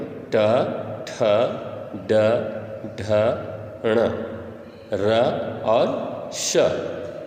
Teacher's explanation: ट ठ ड ढ ण र और श, ये सारे का उच्चारण स्थान मूर्धा है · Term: मूर्धन्य वर्ण